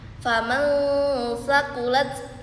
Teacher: terdapat nun sukun bertemu dengan huruf sa dengan cara membacanya yaitu samar-samar dan mendengung